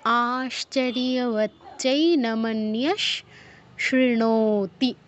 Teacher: তারপর আশ্চর্যবচ্চৈনমন্যঃ শৃণোতি, আশ্চর্যবচ্চৈ দুটো চ, ওচ্চৈ বলতে হবে, ওচ্চৈ বললে একটা চ উচ্চারণ হলো, তাহলে ওচ্চৈ, আশ্চর্যবচ্চৈ নমন্যস, নমন্যস বিসর্গর জায়গায় তালব্যস হসন্ত, পরে যেহেতু আপনার তালব্যস আছে তাই বিসর্গর জায়গায় তালব্যস হসন্ত উচ্চারণ করতে হবে। আশ্চর্যবচ্চৈ নমন্যস শৃণোতি, এই লাইনে আপনার আতে দীর্ঘ, চৈতে দীর্ঘ, নোতে দীর্ঘ, আর কিন্তু দীর্ঘ নেই, বাকিগুলো কিন্তু দ্রুত বলতে হবে, টেনে টেনে বলা নিষেধ।